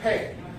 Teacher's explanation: Pretty much the same way you've been saying it. Maybe a little sharper, a bit harsher. It's fourth tone, a downward tone.